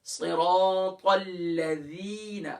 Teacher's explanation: یہ توجہ کے ساتھ صراط الذین، اب دیکھیں ذال آ گیا، ذال ہم نے حروف لثویہ میں سے پڑھا ہے، سافٹ ہے، زبان کا سرا اوپر کے دانتوں کے اندرونی کنارے سے